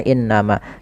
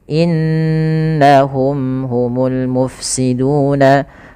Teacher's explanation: Kemudian pada lafal inna, yaitu adalah lafal gunnah, sebagaimana innama ditahan dulu. Kesalahan yang terjadi adalah tidak menahan gunnahnya